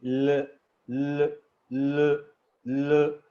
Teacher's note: ठीक है जी, इसमें मतलब जो ल साउंड है इसमें आपकी जो पोजीशन है वो आपकी जो एयर है वो साइडों से निकलती, ल ल ल ल। ठीक है जी, आपकी जो एयर है that is coming out from the sides of your tongue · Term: लेटरल